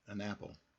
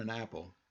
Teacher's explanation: All right, a phrase like an apple, and you see an ends with a consonant. A is the vowel for apple. So we are going to connect them. An apple. All right, an apple will sound like an apple.